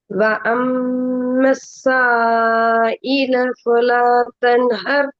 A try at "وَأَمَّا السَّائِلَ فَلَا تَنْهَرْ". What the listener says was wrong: நீட்டுறது போதாது. وَأَمَّا السَّائِلَ فَلَا تَنْهَرْ.